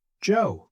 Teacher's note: My voice goes down on Joe. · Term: falling intonation